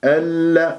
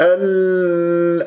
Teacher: اللام اسمية مدغمة مرققة مشددة لا تطل جريان الصوت فيها